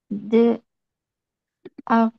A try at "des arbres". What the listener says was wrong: Liaison হবে, একটা consonant আর একটা ভাওয়েল করবে। des arbres, des arbres।